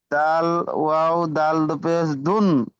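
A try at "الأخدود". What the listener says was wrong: দুন বললে হবে না, ওখানে তাহলে আপনাকে টান দিতে হবে। দু পেশ নেই, এক পেশ আছে। সেই হয়ে গেল দুধ, মানে দু পেশ হয়ে গিয়েছে। আপনি এরকম বানান করেন, দাল অপেশ দু, দাল জের দি দুধ।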